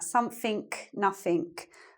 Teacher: in Cockney English you change the ing to a k, and you change the th to an f